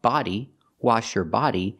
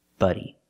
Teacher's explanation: We have body with the open ah sound, like hot and stop, body, wash your body, and we have buddy with the short uh sound, like cup and up, buddy.